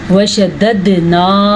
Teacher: پھر سے قلقلہ ہو رہا ہے کیونکہ دال کے اوپر ساکن آ گیا ہے، اور دال کے اوپر جب ساکن آ جائے، جیسے قاف پہ ساکن آئے قلقلہ ہوا ہے، اسی طرح دال پہ ساکن آ جائے تو بھی قلقلہ ہوگا۔